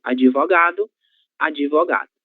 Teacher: Sempre que vocês virem a letra D seguida de alguma consoante, ela será pronunciada como se houvesse a letra I após ela.